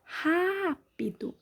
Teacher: sílaba mais forte é o Rá, som aberto, acento agudo.